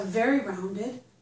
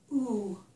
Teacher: my lips are very rounded. Ooh, and they're almost closed, too. There's not a big opening here. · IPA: / u /